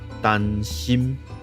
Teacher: 第一个字不要闭口，第二个字在闭口